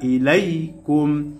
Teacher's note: জবরের পরে ইয়া সাকিন লিনের হরফ তাড়াতাড়ি উচ্চারণ হবে